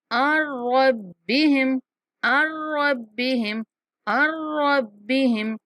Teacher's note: عین کو را کے ساتھ ملائیں گے اور نون کا ادغام کریں گے